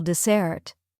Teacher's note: Dessert has the stress on the second syllable